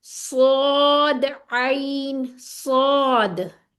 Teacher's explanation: होंठ गोल नहीं करे, स्वाद नहीं कहना, ठीक है, वाव नहीं लेके आना आपने